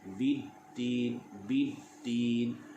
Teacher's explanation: Alif lam syamsiyah, hukum membacanya iaitulah idgham. Artinya kita masukkan terus huruf lam itu ke dalam huruf dal.